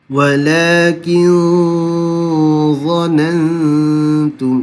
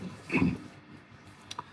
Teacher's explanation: Nun mati bertemu za, dengung dia tebal. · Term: ikhfa